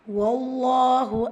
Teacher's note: ஸோ இந்த இடத்துல ஃபத்ஹா இருக்குது. ஸோ அல்லாஹ்வுடைய அந்த லாமில் நம்ம வல்லினப்படுத்தி ஓதணும்.